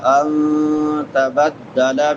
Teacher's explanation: ولا ان نون ساکن ہے، نون ساکن کے بعد تا ہے حروف اخفاء میں سے، تو یہاں پہ اخفا ہوگا